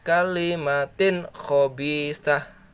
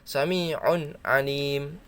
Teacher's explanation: Pokoknya nun mati ataupun tanwin bertemu dengan salah satu dari ke-6 huruf ini, ke-6 huruf ini dia wajib dibaca jelas, tidak berdengung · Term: idhar